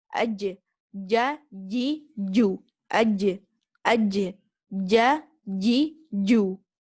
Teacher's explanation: when we are pronouncing this jim, we should only use the middle of the tongue